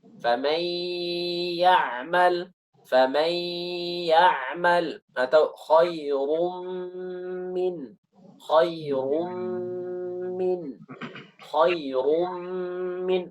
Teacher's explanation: gunnahnya itu ketika masuk ke huruf yang setelahnya, itu gunnahnya selesai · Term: idgham bi gunnah